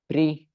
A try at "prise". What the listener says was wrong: Pris. Il y a quoi derrière? Ici. E. Donc, du coup, tu dis comment? Prise. Prise.